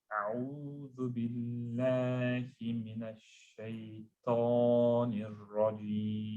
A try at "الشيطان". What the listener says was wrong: When you say ta, you know, you see your tongue? What you're doing is you're elevating the front, right? I want you to elevate the front and the sides. Shay, ta. It's almost as though your tongue is lifting up. So this is your mouth, like that, right? Your tongue's lifting up and closing all the gaps. Ta, ta, ta.